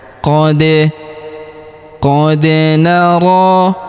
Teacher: [Musik] Qad naro taqalluba wajhika fisama. Perhatikan huruf da berharakat sukun. kita pantulkan atau kita qalqalahkan.